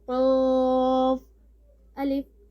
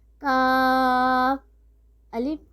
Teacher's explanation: اب ہم نے دو نقطے والے قوف کو ہم نے پر پڑھا، حلق کی جڑ کو اٹھایا کیونکہ حروف مستعلیہ میں سے ہے